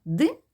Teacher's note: звук і замінимо на звук и і тоді звук ди у нас в слові дим буде уже твердий приголосний